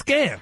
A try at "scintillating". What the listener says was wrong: No, the C is silent.